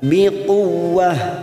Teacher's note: Tak marbuto yang berharokat kasr tanwin. Karena di sini kita waqaf pada tanda qaf lam, maka kita baca biquwwah, ujungnya ha.